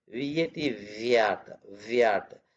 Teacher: here wh a what coming with round lips v v vat coming with vibration with lower lip